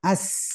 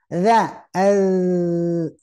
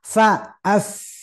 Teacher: kalau sin kan kalau dimatikan as, ketika ditahan lama tetap aja bunyi